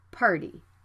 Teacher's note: the t is between an r and a vowel so the sound can be flapped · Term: flap t and d